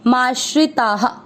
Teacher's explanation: ता में आ की मात्रा है इसलिए विसर्ग को पढ़ेंगे हा